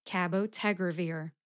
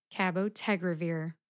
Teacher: Teg gets the most emphasis. Ca gets the second most emphasis. Cabotegravir.